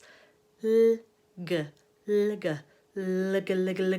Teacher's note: And by moving really quickly between the two, eventually you can try to sort of mould the two into one, and you'll begin to hear a dark L forming